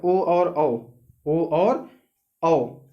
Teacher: इनका उच्चारण स्थान क्या है, कंठ्योष्ठम। कंठ और होंठ, मतलब गला और होंठ